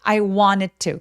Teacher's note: N 소리고 T는 소리를 내는데 혀의 위치가 거의 같습니다. 그래서 이 유성음인 성대가 울리는 N 소리가 T를 잡아먹어요.